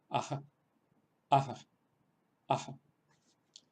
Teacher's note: La bisarga ya indicamos que era una especie de H aspirada. Lo que pasa es que una de las formas, la forma digamos habitual de pronunciarla, es provocando una especie de reflejo de la vocal que lo precede.